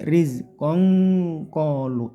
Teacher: Terus tanwin bertemu qaf, ini namanya ikhfa. Ikhfanya qaf itu ng ya, ng dari rizqong kolu, ng kayak singkong gitu ya, rizqong kolu, konya panjangkan 2 harokat, lunya juga panjangkan 2 harokat.